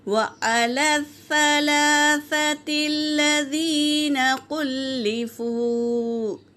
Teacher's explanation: واو ساکن سے پہلے پیش واو مدہ، اسے بھی ایک الف کے مقدار کھینچ کر پڑھیں گے